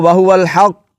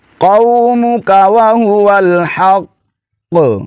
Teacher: اگر آپ اس کو وَهُوَ الْحَقُّ ایسے پڑھ لیں گے تو کاف سرے سے ادا ہی نہیں ہوگا۔ قاف کو جماؤ کے ساتھ ادا کرتے ہوئے پھر آواز کو تھوڑا سا جنبش دیں گے، ہلائیں گے، آواز لوٹتی ہوئی محسوس ہو